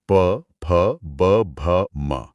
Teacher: ओ यानी ओष्ठ हमारे होंठ। जहां से प वर्ग की ध्वनियां निकलती हैं। प भ म। यह गले से लेकर होठों तक का एक परफेक्ट सीक्वेंस है।